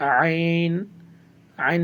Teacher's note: আইনটা আপনার কণ্ঠনালীকে চেপে পড়তে হয়, জন্য আইন উচ্চারণ করার সময় অবশ্যই একটু কণ্ঠনালীকে চেপে পড়বেন।